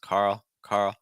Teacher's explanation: Carl finished with a dark l